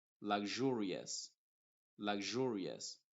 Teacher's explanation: otra opción es que suene como una sh como sh y en el primer ejemplo está sonando como una zh inglesa · en el primer ejemplo está sonando como una ZH inglesa que se pronuncia como j, j. Por ejemplo, lag, pronuncio hasta la G, lag, y luego jur, luxurious, luxurious.